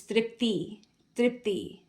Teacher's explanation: the first I is a zer, right? Short vowel. And the second one is a long vowel.